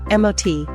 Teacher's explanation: The T is unreleased, meaning your tongue touches the roof of your mouth but you don't fully release the T sound. It's a stop, not an explosive T.